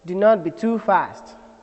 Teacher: there is a falling then a rise of the peit of the voice towards the end of that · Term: falling Rising tune